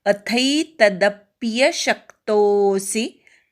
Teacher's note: तदप्यमधल्या दवर आघात घ्यायचा, शक्तोमधल्या शवर आघात घ्यायचा, तो पुढे अवग्र आहे त्यामुळे वाढवायचा, सी पटकन म्हणायचा.